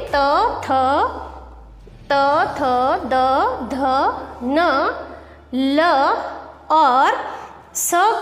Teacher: त वर्ग में त थ द ध न ल और स का उच्चारण करने पर जिह्वा दांतों का स्पर्श करती है।